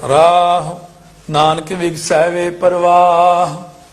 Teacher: ਰਾਰੇ ਦਾ ਕੰਨਾ ਲੰਮਾ ਤੇ ਔਂਕੜ ਛੋਟਾ